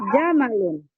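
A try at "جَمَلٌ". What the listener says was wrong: Jangan dipanjangkan mimnya ya, jamal. Kalau jamal, mimnya dipanjangkan indah. Jamal. Hada, jamal.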